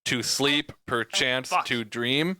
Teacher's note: stressing every other syllable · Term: alternating